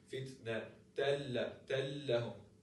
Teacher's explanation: Now I take out the nun and I directly merge the ta, because we said the second haraka is just an indication of the nun. So we take out the second haraka and merge the ta with the lam